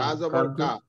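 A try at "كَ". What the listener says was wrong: কা জবর কা হয় না তো, কাফ এই হরফটার নাম তো কাফ।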